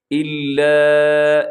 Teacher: اسے کہا جاتا ہے مد منفصل، مد جائز بھی کہا جاتا ہے، اسے آپ نے لمبا کرنا ہے 3-4 سیکنڈ تک